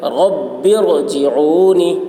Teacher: تو زیر عارضی ہے اس وجہ سے را کو پر پڑھیں گے. را ساکنہ سے پہلے زیر عارضی ہے اس وجہ سے اس لیے را کو پر پڑھیں گے.